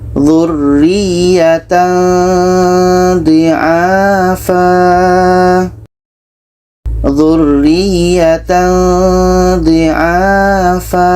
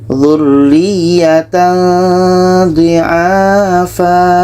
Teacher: Ketika kita baca tanwin, kita sudah merasakan huruf dha. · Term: ikhfa hakiki